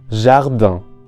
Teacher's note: this vowel sound could be compared to the English a in a word like back, but nasalized. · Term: nasal vowel un